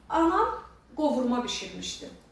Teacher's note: Qovurma sözündə vurğu sona düşür isim kimi.